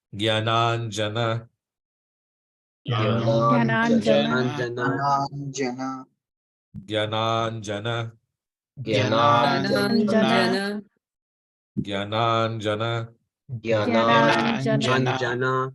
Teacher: we pronounce the first two A's as long A's and the second two A's as short A's